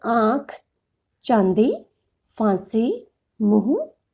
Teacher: जिस स्वर के उच्चारण में वायु मुख और नासिका दोनों से निकलती है उसे अनुनासिक कहते हैं।